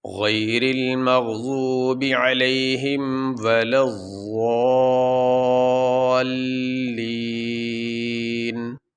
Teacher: وقف کرنے کی صورت میں یہ نون کے اوپر جو زبر ہے یہ نہیں پڑھا جائے گا، نون کو ساکن پڑھیں گے